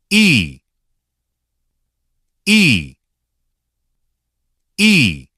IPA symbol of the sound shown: i